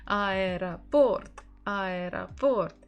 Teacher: So we stress port, port. The final O is stressed.